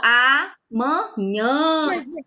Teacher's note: Olha o som nasal aqui do nhã.